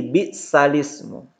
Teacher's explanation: memindahkan harokat hamzah, ini yang berharokat ini hamzah i, kepada huruf sebelumnya menjadi bisalismu. Jadi al-ismu menjadi alismu. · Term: naqal